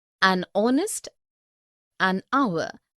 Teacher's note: the initial consonant h is not pronounced